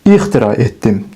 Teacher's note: vurğu gəlib düşür A saitinin üzərinə. Demək ki, vurğu sonuncu saitin üzərindədir.